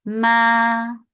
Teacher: without gunna, make it 2 counts long